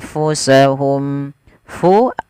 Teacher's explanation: Kemudian samarkan huruf nunnya kepada huruf fa sambil ditahan anfusahum. Fu alirkan nafas. Sifat hamesnya mengalirnya nafas.